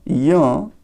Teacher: य का उच्चारण स्थान तालू है